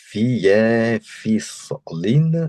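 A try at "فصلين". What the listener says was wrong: toi, tu as dit fislin, fa, fatha. fislin. Et fa. Faslin.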